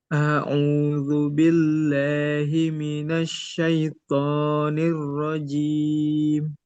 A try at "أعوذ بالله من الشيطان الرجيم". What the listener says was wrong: Roknya ditebalkan lagi. A'udzu billahi minasy syaithanir rajim.